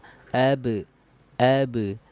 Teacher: ya contoh huruf ba ya huruf ba yang sukun yang jelas huruf Qalqalah itu dia pantulannya lembut ya pantulnya lembut saja